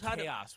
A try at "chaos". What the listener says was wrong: It's like there's like an os at the end. chaos. Two syllables.